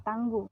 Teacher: bunyi U tinggi bawah belakang bundar apabila berada pada silabel tertutup seperti pada kata tangguh.